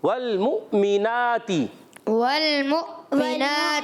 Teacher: मुमिना में भी हमजा को झटके से अदा करेंगे